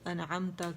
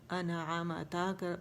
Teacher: پھر زبر زیر پیش کی غلطی کرنا، جہاں زبر تھا وہاں زیر کر دیا، جہاں زیر تھی وہاں زبر کر دیا، پیش کی جگہ زبر یا زیر کرنا، ساکن کو متحرک کرنا، متحرک کو ساکن سے بدل دینا، جیسے انعمتا کو انعامتا پڑھنا، عم تھا میم پہ ساکن تھا تو اسے ہم نے زبر دے دی